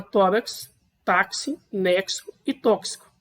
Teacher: Perceba que esse X do final do tórax, ele tem o som de KS.